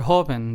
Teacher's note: the first syllable same thing goes with the second word Hoven there are only two syllables so the syllable that we stress is the first one